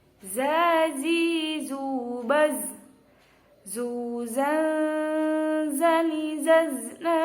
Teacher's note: Huruf za ini yaitu tempatnya ujung lidah menghadap dan mendekat di antara gigi depan, atas, dan bawah. Jadi za seperti itu, bukan sa, bukan za, bukan za, tapi za.